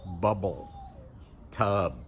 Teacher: Tub, we've got the B at the end. In each position, our lips go together and we get that explosion.